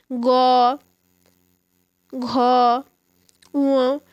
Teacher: যে সমস্ত ব্যঞ্জন ধ্বনি উচ্চারণ করার সময় স্বরতন্ত্রের কম্পন জাতীয় নাদের সৃষ্টি হয় সেই সমস্ত ব্যঞ্জন ধ্বনিকে ঘোষ বা সঘ ব্যঞ্জন ধ্বনি বলা হয় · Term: ঘোষ ব্যঞ্জন ধ্বনি